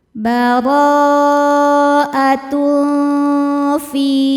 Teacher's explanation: Berikutnya ada hukum ikhfa hakiki awsat karena ada tanwin dhammah menghadapi huruf fa. Cara bacanya tanwin disamarkan ke fa disertai bunyi dengung, samar dan dengungannya sama besar.